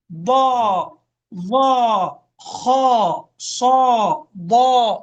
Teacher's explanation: إيش؟ فخمه، اجعله فخما كبيرا ضخما، املأ به فمك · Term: حروف التفخيم